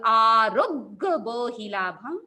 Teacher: आरोग्य र पर प्रेशर जाएगा र से शुरू होगा